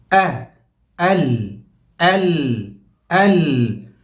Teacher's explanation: ال حمزہ کی آواز بالکل باٹم آف دی تھروٹ، جہاں سے سینہ شروع ہو رہا ہے، یہاں پر ایک آرگن ہے، ایک ڈھکن ہے، اس کا نام ہے ووکل کورڈ.